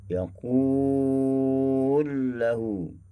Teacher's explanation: memasukkan lam yang pertama ke dalam lam yang kedua dan disabtukan lam yang kedua. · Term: idgham kabir